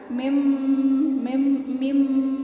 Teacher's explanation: dibaca samar yakni bibirnya ditutup ya, tapi tidak ditekan. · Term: ikhfa syafawi